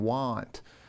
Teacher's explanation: It's created in the lower part of the mouth, with the mouth open, and it's not the long A or the short A, it's actually an ah sound, as in want.